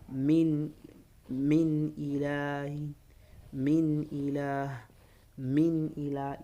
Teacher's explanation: as far as izhar is concerned, you don't have to elongate any nasalization. No nasalization. Just say min ila.